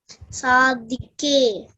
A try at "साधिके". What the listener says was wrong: Again, DH is in red letter. That means you have to stress. Sadhike.